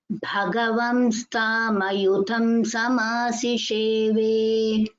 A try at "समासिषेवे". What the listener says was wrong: Only samasisheve, little more stress on samasisheve. That sakara since there's a